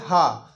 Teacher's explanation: जब आप बोलेंगे तो देखिए मुख आपका खुला रहता है और कंठ खोलकर झटके के साथ ह जब बोलेंगे तो झटके के साथ हवा बाहर आती है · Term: काकल वर्ण